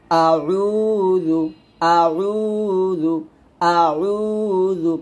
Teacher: এই জালের উচ্চারণটা জিহ্বার আগা উপরে দাঁতের আগা লাগাতে হবে নিচে দাঁত লাগাইলে একটু ফুল হবে